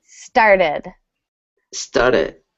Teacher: the t sounding like a d happens very often in American English